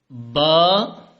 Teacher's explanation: یہ با کی آواز تب نکلے گی جب ہم اپنے دونوں ہونٹ آپس میں ملائیں گے